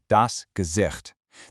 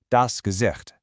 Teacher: That chi sound is a soft one kind of from the back of your throat.